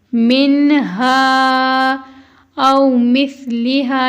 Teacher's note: سا نرم حروف میں سے ہے اور ہا سینے سے ادا ہونے والی ہا ہے